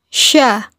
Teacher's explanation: keluar dengan menyentuh Tengah lidah dengan langit-langit diucapkan mengalir udaranya dan mengalir nafasnya pula bahkan ketika melafalkannya menyebar nafas dan udaranya yang disebut dengan tafasyi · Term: huruf Sya, tafashi